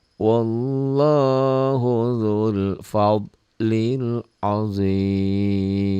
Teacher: Wallahu dzu jadi pendek karena ketemu sukun. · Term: mad tabi'i